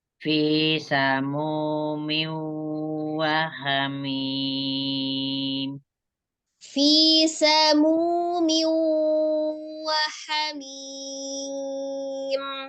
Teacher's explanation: Munya sekarang ya munya yang terlalu panjang. Jadi madhobi itu harus 2 harokat saja ya, tidak boleh berlebih. Jadi sekali mengayun.